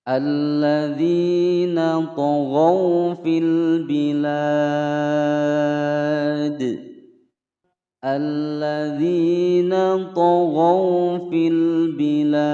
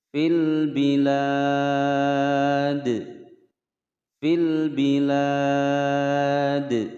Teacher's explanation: Pada huruf dal ini kita baca memantul karena dia disukunkan. Harokat aslinya adalah harokat kasroh. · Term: qalqalah kubra